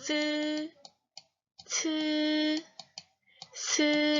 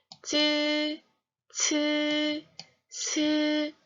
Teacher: 혀끝을 윗니 뒷면에 붙여서 대면서 내는 소리다